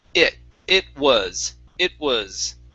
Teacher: pronouncing the t like a flap t saying it was okay in this word uh we would not pronounce that like a flap t it would actually be a stop t